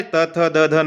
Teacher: इनका उच्चारण स्थान है दंत, अर्थात दांतों को स्पर्श करके इनका उच्चारण होता है, इसलिए इनको दंत या दंतव्य वर्ण भी हम कहते हैं।